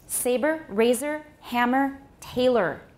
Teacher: ur is like ooh in most forms of american english in that it too can be syllabic when it occurs at the end of a word and after a consonant · say them as syllabic or you could call them syllabic because er has r from the beginning to the end in it it's the only vowel the vowel when we have our coloring